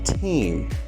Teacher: the sound can be pronounced as an aspirated t like in the word team